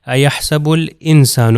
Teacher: ایحسب دیکھیے اس میں لام کو پروناؤنس کر رہا ہوں مگر الف پروناؤنس نہیں ہو رہا. ایحسب الانسان اللن، اب دیکھیے لام کے اوپر بھی شدہ ہے.